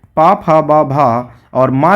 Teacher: ये ओष्ठ ध्वनियां कहलाती हैं या होठ के द्वारा इनका उच्चारण किया जाता है